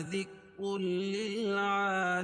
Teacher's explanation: ادغام کریں گے لیکن غنہ نہیں کریں گے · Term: ادغام بلا غنہ